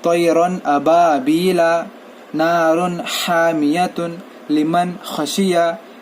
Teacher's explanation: तो तनवीन या नून साकिन के बाद अगर हुर्फ हल्की आए, हमजा हा, आइन हा, गैन खा, तो नून को जैसा है वैसे ही पढ़ेंगे, नून की आवाज़ को बतलाएंगे, जाहिर करेंगे